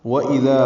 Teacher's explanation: واو ہونٹوں کی نا تمام گولائی سے ادا کریں گے، حمزہ کو جلدی معروف پڑھیں گے، دال کو نرمی سے پڑھیں گے اور 2 حرکات لمبا کریں گے، الف مدہ ہے۔